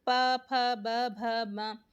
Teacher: जब भी हम प बोल रहे हैं तो हमारे जो दोनों लिप्स हैं, दोनों होंठ हैं, वो एक दूसरे के ऊपर गिर रहे हैं ना, तो उसका जो उच्चारण स्थान होगा वो ओष्ठ होगा।